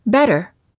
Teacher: Ridge this sound is also sometimes called a tapped T because you quickly tap the tip of the tongue on the gum Ridge